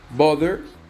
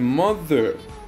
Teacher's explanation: we place the tongue between the top and bottom teeth and push the air out this sound is voiced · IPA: ð